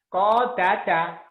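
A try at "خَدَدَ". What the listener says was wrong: Orang Jawa kodada. Kho. Khoir. Khoir. Kho. Kalau di Jawa, kho itu kadang-kadang ke ko. Jadi ko. Padahal kho.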